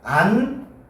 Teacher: 안타는 히읗과 디귿이 만나서 축약이 이루어지는 거지. 축약이 이루어져서 안타가 되는 거야.